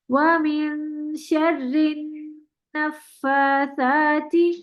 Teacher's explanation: نون پہ گننا کا دو حرکت کا لمبا گننا بھی کریں